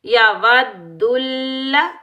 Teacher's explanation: दाल के ऊपर भी तशदीद है और लाम के ऊपर भी तशदीद है, शद है। इन दोनों को हमने सख्ती से अदा करना है